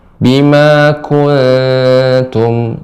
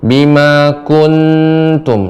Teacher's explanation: Nah, ini juga Ibu, pada kata kuntum ini dia ikhfa, nun sukun ketemu dengan ta, ikhfa, kemudian lidah jangan lengket ke langit-langit. Bima kuntum, ya, disamarkan, monyong sedikit, tarik lagi.